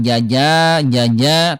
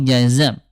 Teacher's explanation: jim tengah lidah, kalau zai ujung lidah